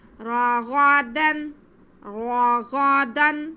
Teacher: را کو موٹا پڑھیں گے کیونکہ را پہ زبر ہے اور غین کے بعد کو ہم منہ تھوڑا گول کر کے